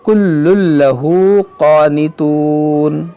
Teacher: دیکھیں یہاں پر دونوں لام مشدد ہے، یہاں تنوین کے بعد لام ہے تو یہاں پر ادغام کریں گے